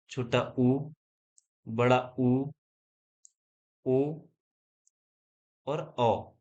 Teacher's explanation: यह सभी बोले जाते हैं हमारे जीवा के पश्च भाग से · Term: पश्च स्वर